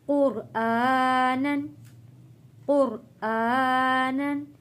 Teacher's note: क़ाफ और रा मोटा पढ़ा जाएगा, खड़ी ज़बर को एक अलिफ के बराबर खींच कर पढ़ेंगे।